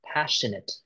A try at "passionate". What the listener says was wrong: No, not the sir, it's sh.